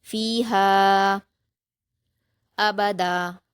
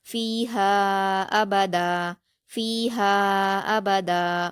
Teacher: فا پر یا مدہ ہے، 2 حرکات کھینچیں گے، ہا پر الف مدہ ہے، 2 حرکات کھینچیں گے، لیکن الف مدہ کے بعد حمزہ دوسرے کلمے میں آیا ہے تو یہاں مد منفصل ہوگا تو اس کو ہم 4 حرکات کے برابر کھینچ کر پڑھیں گے